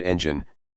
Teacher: In the word engine, you should stress the first syllable.